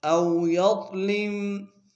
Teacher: او میں واؤلین بغیر کھینچے پڑیں گے، یا کو ضاد کے سامنے لائیں گے، ضاد کو موٹا ادا کریں گے۔